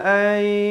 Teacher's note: Minal kitabi ana atika bihi qabla ay, masuk berserta dengung. Asalnya an, tapi bila bertemu ya jadi idgham bi gunnah. Ayyar, ra jadi tebal.